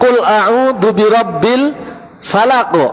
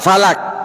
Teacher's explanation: Karena qaf sama kaf satu makhraj, di antara pembedanya ketika sukun adalah qalqalah dan tidak.